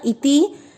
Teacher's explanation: इति ई छोटी मात्रा है, ती छोटी, दोनों को नहीं खींचना।